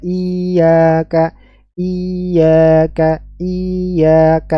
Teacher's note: membaca huruf ya pada kata iyaka Masih pada kata iyaka tanpa tasydid dan dibaca panjang